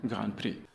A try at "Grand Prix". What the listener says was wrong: Another case where we have a long I that gets reduced a little bit. Grand Prix. Instead of Grand Prix, it's more Grand Prix. So watch out for long vowels at the ends of words. You want to make sure they're not reduced. It's not Grand Prix, it's Grand Prix.